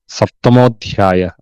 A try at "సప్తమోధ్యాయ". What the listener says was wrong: ధ్యా ధ్యా అవుతున్నారు మీరు. ధ ధ థ ద థ ద థ. మీరు థాకి ధాకి తక్కువ మధ్యస్థలో పలుకుతారు. సప్తమోధ్యాయ. అధ్యాయం అధ్యాయం ధ థ థ ద ద తేలిక ద ధ ద ధ.